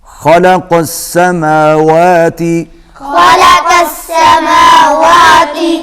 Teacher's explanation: خا کو حلق سے ادا کریں گے، موٹا ہوگا، قاف بھی موٹا پڑا جائے گا۔